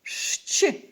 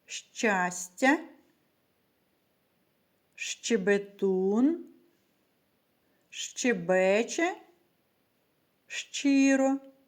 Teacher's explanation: шч вимовляється з перешкодами для видиху повітря і твердо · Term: звукосполучення шч